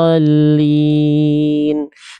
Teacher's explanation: Ketika masuk ke lam, itu dia agak naber, agak kuat. Jadi nabroh tuh penekanan yang lebih kuat pada huruf yang bertasydid di huruf lamnya.